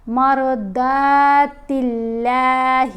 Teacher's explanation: را اور داد ان دونوں کو پر پڑھیں گے، موٹا پڑھیں گے.